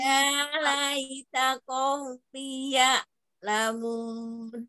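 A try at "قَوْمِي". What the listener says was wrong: Kaumi, ini panjang.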